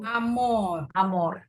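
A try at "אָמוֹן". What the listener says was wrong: amon. Ini nun sopit. Nun sopit ya. Amon.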